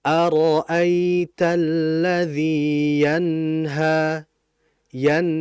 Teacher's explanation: Maka kita harus menjelaskan suara nunnya disertai dengan aliran dan ghunah pada nun. Cuman ghunah di sini adalah ghunah yang naqisah, ghunah yang tidak sempurna. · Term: izhar halqi